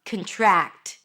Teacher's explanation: go ahead and release that T like there is no tomorrow